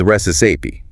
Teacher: The pronunciation is recipe. Stress on the first syllable.